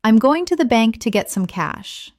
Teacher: Notice how certain words are stressed: going, bank, get, cash.